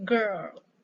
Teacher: Banyak yang pronounce girl atau ke, ya, tapi girl, ya. Seperti biasa, R-nya itu melengkung, lidah kita melengkung untuk mempronounce girl.